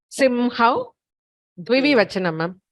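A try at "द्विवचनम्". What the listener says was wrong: Dvivachanam. It is not dvivivachanam. It is only dvivachanam.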